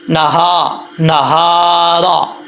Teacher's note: را کے اوپر زبر، اس کو پر پڑھا جائے گا